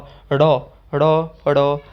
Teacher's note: तो ड़ मतलब कि जीभ आपकी क्या है ऊपर लग रही है मुर्दा के साथ छूती हुई, और फिर झटके के साथ नीचे आड़े ड़ बोलने के उच्चारण ड़ ड़ ड़ ड़, है ना। तो आपकी जीभ बिल्कुल ऊपर और फिर नीचे आ रही है एकदम से। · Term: उत्क्षिप्त व्यंजन